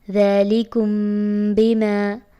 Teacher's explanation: اخفاء شفوی کیا ہے کہ میم ساکن کے بعد بے متحرک آ جائے تو اخفاء کریں گے اور غنہ کر کے پڑھیں گے۔